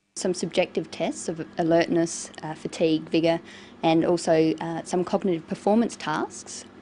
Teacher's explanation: she uses rising and falling tones and a tone that's neither rising nor falling just a flat tone